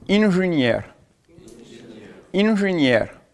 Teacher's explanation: une junière, ça veut dire un ingénieur. Donc là, on va avoir un accent tonique qui va se placer sur la finale